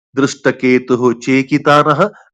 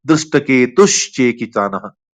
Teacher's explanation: So this is the same sandhi, like Ramah cha Ramascha. So Visarga is taking the shape of Sha.